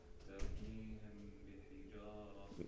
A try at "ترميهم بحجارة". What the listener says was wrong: Make the ghunnah a bit longer.